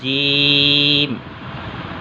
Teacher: بچوں اس کا مخرج ہے، یہ دیکھیں، زبان کے بیچ کا حصہ، زبان کے بیچ کا حصہ اوپر کے تالو سے لگائیں تو حرف ادا ہوتا ہے